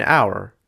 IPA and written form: aʊ̯ə̯ (hour)